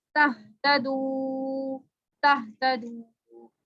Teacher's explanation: یہ واو مدہ ہے, اس کو 3 سے 5 الف کے برابر لمبا کریں گے. 3 سے 5 الف کا مطلب 3 سے 5 سیکنڈ کے لیے.